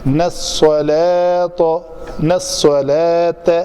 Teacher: ये सीन और स्वाद से इसको फ़र्क करना है, ये मोटा है तो इसको स्वाद को ज़ाहिर करनी है।